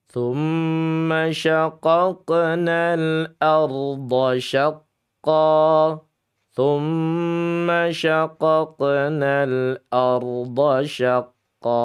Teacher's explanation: Dan huruf qof-nya memang huruf ist'la dan dia dibaca panjang cukup dengan dua harakat saja karena sebagai mad iwad atau mad pengganti fathatain